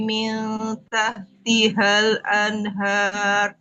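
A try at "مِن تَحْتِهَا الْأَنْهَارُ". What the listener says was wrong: Nah, kepanjangan.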